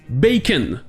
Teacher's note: Dans le mot bacon, le ON se prononce un.